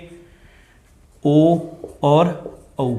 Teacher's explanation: कंठ ओष्ठक यानी कि कंठ और होठ दोनों सक्रिय होंगे जब हम ओ और औ का उच्चारण करेंगे